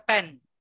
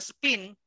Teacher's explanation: yung P dito ay aspirated. Pag sinabing aspirated, yung parang pag-pen, parang, alam ba yun, may konting puff of air, parang ganon.